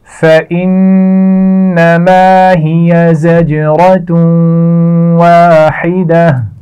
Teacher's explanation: واحدہ الف مدہ ہے اور ہا کو واضح رکھنا ہے